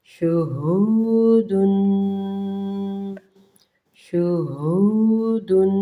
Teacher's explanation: غنّے کو 2 سیکنڈ تک ناک میں منہ میں رکھیں اس کو